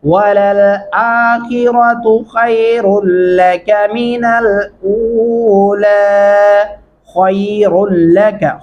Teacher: खै खा मोटा और पुर करके पढ़ेंगे, और लका रा को भी मोटा पढ़ेंगे, मिनल ऊला।